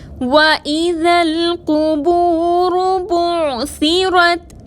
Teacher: قاف حروف مستعلیہ میں سے ہے، موٹا پڑھیں گے، واو ساکن سے پہلے پیش ہے، واو مدہ ہے، 2 حرکت کے برابر کھینچ کر پڑھیں گے، بعثرت میں عین کو بغیر جھٹکے کے ادا کریں گے۔